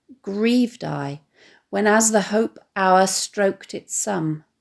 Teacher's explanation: the stress falling on the verb grieved but we also get three stressed syllables one after the other · The result is that not only does Hardy emphasise the depth of his sadness through the stress falling on the verb grieved, but we also get 3 stressed syllables one after the other, which we could argue suggests the sound of the clock striking the hour. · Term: spondee